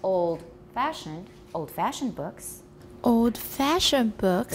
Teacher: here old-fashioned is the new information and the tonic stresses on fashion old is also stressed